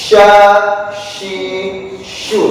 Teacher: Ujung lidah, tengah lidah nggak sampai menyentuh. Yang jadi perbedaan dengan jim tidak sampai menyentuh, hanya menggeser aja, disertai dengan udara keluar. Jangan terlalu kalau jim tadi kan nempel tuh, ini nggak boleh, cukup menggesek aja. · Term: Shin